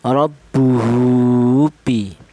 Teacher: huruf ha ini berharokat dhammah ini dibaca panjang, yaitu panjangnya seperti matobi, yaitu 1 alif atau 2 harokat atau 2 ketukan